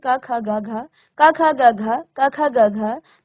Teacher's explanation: जो क वर्ग है इसका उच्चारण बेटा आप अपने कंठ से करते हैं। उच्चारण का जो स्थान है वो कंठ से है।